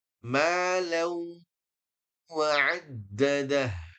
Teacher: Di sini secara hukum malau ada idgham bi gunnah. Masukkan dan dengungkan.